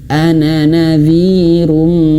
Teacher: Ana harusnya di sini bacanya ana 2 harokat, ana 1 ayunan